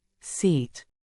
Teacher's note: in English the first long vowel is I as in seat your lips are slightly stretched almost like a soft smile you'll hold this sound out for a bit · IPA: /iː/